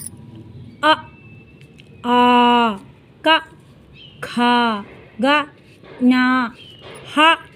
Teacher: ಕಂಠ್ಯವರ್ಣಗಳು ಅಂದ್ರೆ ಕೊರಳಿನಲ್ಲಿ ಗಂಟಲಿನಲ್ಲಿ ಹುಟ್ಟುವಂತಹ ಪದಗಳು ಅಕ್ಷರಗಳನ್ನ ಕಂಠ್ಯವರ್ಣ ಣಗಳು ಅಂತ ಹೇಳ್ತೀವಿ ಅಂದ್ರೆ ಇದನ್ನ ಹುಟ್ಟುವಂತ ಸ್ಥಾನ ಕೊರಳು ಗಂಟಲು